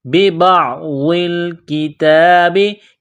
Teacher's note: کاف کو باریک کرنا ہے، تا کو باریک کرنا ہے، ایک الف کے لمٹ میں کھینچنا ہے تا کو · ہے، أَفَتُؤْمِنُونَ بِبَعْضِ الْكِتَابِ، با کو عین کے ساتھ ملانا ہے، غاد کو موٹا کرنا ہے، غاد کو لام کے ساتھ ملانا ہے ، بِبَعْضِ الْكِتَابِ، کاف کو باریک کرنا ہے، تا کو باریک